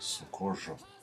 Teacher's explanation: In northern Argentina, for example, the trilled R sounds more like a zh. And in Puerto Rico, it sounds more like a h.